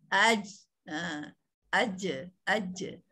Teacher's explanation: Jadi tengah lidah menyentuh langit-langit ya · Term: jim